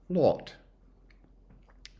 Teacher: It's the vowel O. So it's an A with lip rounding.